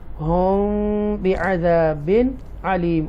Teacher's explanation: Okay, hum okay, ہم یہاں پر اخفائے شفوی کریں گے after mim sakina ba is coming, so we make a guna here